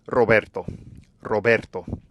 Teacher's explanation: we're going to find the double or triple flap when we have an r at the beginning of a word